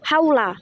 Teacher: kombinasi harakat fathah bunyi a dengan huruf wawu sukun menghasilkan bunyi au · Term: vokal rangkap